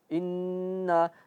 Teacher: Inna sini bertasdid harus berdengung dan dia masuk hidung. Inna tetapi ketika a ketika na panjangnya itu enggak enggak masuk hidung lagi. · Inna sini bertasydid harus berdengung dan dia masuk hidung. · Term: ghunah bertasydid, gunnah